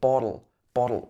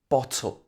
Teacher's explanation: we normally say in the british action it should be bottle we wouldn't have this tapped t sound in the british accent